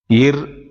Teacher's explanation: மேல்வாயை நாக்கின் நுனி வருடுவதால் பிறக்கின்றன